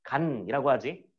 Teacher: 혀의 끝부분이 윗잇몸과 이빨 사이를 딱 찍으면서 멈춰 있죠. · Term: 니은